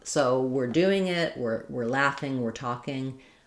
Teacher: The we're often starts sounding a little more just like were, same as the word were.